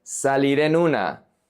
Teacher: Here, we have consonant plus consonant. The r connects to the e. The n connects to the u.